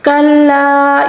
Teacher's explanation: مد منفصل ہے، اس کو 3 الف کے برابر کھینچ کر پڑھیں گے